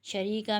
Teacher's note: یہ یا مدہ بن رہا ہے، 1 الف کی مقدار کھینچیں گے